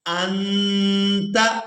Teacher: اب یہاں پر بھی اخفا کریں گے، حمزہ نون زبر ان، تا زبر تا، انت۔ یہاں پر ہم نے نون ساکن کی آواز کو ناک میں چھپا کر ادا کرنا ہے۔